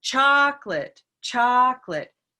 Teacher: we have now located the stress, which is on the first syllable